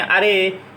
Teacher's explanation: अपन जैसे किसी को बुलाते हैं अरे, तो अरे की आवाज़ में बड़ा जोर लगता है, इसलिए इसमें दीर्घ स्वर से तिगुना समय लगता है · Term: प्लस स्वर